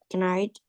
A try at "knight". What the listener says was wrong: night. We don't say the K. Night.